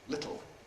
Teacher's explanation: ‘little’ [ˈlɪtl̩]: lateral release.